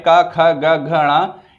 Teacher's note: का वर्ग में जो 5 अक्षर हैं का ख ग घ ण, ये पांचों जो है वो कंठ से हो गए